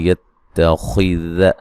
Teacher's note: खा को मोटा अदा करेंगे